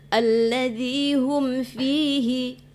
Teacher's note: Hum itu enggak dengung, ya. Itu izhar safawi, ya, izhar di bibir.